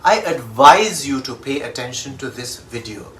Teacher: spelt with an s that has a z sound